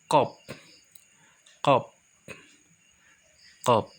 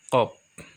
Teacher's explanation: Tempat keluarnya dari pangkal lidah dan langit-langit mulut bagian belakang.